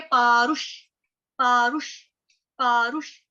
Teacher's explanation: प आ र उ, पारु, पा जो है ये दीर्घ है, यहाँ पे पा आ की मात्रा लगी है, लेकिन जो रू है वो छोटे वाला है, रुक वाला, तो वो फटाफट बोलेंगे पारुष, पारुष, पारुष।